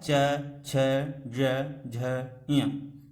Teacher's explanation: जिह्वा के ऊपर जो छत है, इसके मध्य भाग में जब हमारी जिह्वा जाके स्पर्श करती है तब इन वर्णों का उच्चारण होता है